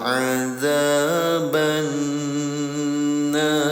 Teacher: kondisinya nun dalam keadaan tasydid. Ya, cara bacanya dengungkan selama 2 harokat, namanya gunnah.